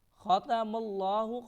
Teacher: خا کو موٹا پڑھیں گے، تا کو بریک پڑھیں گے